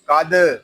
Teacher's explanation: यहाँ दाल साकिन है, इसमें कलकला खूब जाहिर होगा।